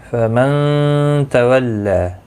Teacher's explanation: شروع کرتے ہیں. فمن تولی، نون ساکن کے بعد حروف اخفا کا تا آیا، اخفا حقیقی ہوگا، گنہ کے ساتھ پڑھیں گے. لا تولا، لام کے اوپر کھڑی زبر ہے، ایک الف کی مقدار کے برابر کھینچ کر پڑھیں گے.